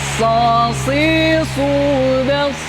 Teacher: ini adalah huruf al-lisan, bukan syafatan, bukan dua bibir. Ya, tidak ada pengaruhnya pada bibir. Ya, yang tersering terjadi pada kesalahan membaca di huruf so itu dia memonyongkan so, si, su, bells.